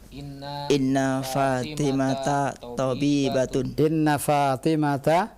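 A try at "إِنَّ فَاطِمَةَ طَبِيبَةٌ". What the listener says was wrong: Ahsant.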